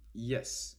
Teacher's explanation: the front part of the tongue touches the hard palate. In English, for instance, the only palatal is the semivowel, y, as in yes. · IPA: /jes/